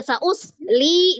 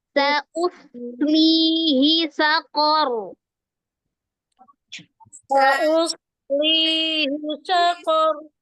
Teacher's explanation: Sod sukun dengan li-nya itu jangan terputus karena di situ ada sambung soalnya ada sofir ya, ada alhamsnya, ada desisannya, tidak boleh diputus.